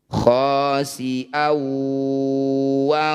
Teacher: Bunyi fathah tanwinnya masukkan pada wawuh, dengungkan 2 harokat. Jadi ketika dengung, ketika ditahan, posisi bibir sudah mencucu. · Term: idgham bi gunnah